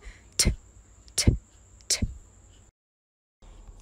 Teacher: To make the T sound, your tongue needs to be placed just behind your teeth. It's a voiceless sound made as you push the air past your teeth and tongue. It's actually the same action as the D, but D is a voiced sound.